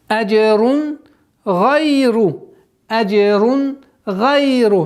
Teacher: Танвин, после которого идет гайн, гортанный звук, четкое ясное произношение, без никаких изменений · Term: изхар